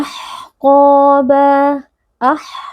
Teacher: Huruf ha sukun mempunyai sifat-sifat rakhawah dan hams. Jadi, napas dan suara kita harus mengalir · Huruf ha sukun bersifat rokhawah dan juga hams, maka nafas dan suara kita mengalir. Qaf huruf tebal, huruf tafkhim, maka naikkan pangkal lidah supaya dia bisa menebal dengan sempurna. Kemudian pada ko ini juga terdapat mad tabi'i sehingga harus dibaca panjang 2 harakat karena ada alif yang sebelumnya berharakat fathah.